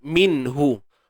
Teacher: Ini ada hukum izhar halqi. Nun mati yang perlu dijelaskan sebutannya apabila bertemu dengan ha yang datang daripada kerongkong kita.